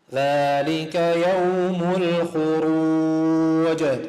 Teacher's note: حرف الجيم جاء مكسور وقفت عليه صار ساكن أقلقله